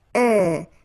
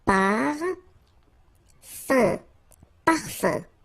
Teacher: So it's nasal and it's un. So it really goes in your nose. You don't pronounce the M at all.